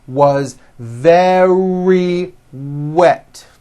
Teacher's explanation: remember very starts with a V sound followed by a strong R